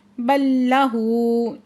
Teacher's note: بل لہو، ساکن لام جو ہے مدغم ہو جائے گی، لام مشدد کی آواز آئے گی۔ بل لہو، ہا کے اوپر الٹا پیش ہے، دو حرکت کھینچ کے پڑھیں گے